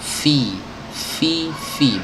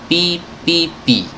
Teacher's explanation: Ujung gigi seri atas ditempelkan ke perut bibir bawah. Fi, bukan pi.